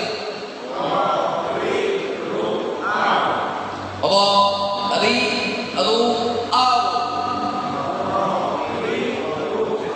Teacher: Hanya 2 getaran. Jangan lebih, jangan kurang daripada 2 getaran. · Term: takrir